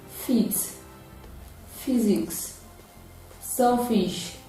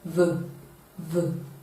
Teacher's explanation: While F is voiceless, V is voiced.